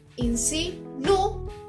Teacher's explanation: Entonces, su fuerza se ubica en la U. Insinúan. Su tilde se ubicaría en la U, que es una vocal cerrada. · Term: hiato